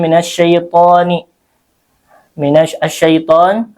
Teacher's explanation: to-nya di sini panjang 2 harokat karena mad tabi'i, ada alif sukun yang sebelumnya fathah